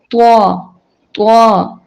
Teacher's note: طوا کو موٹا اور اونچا پڑھنا ہے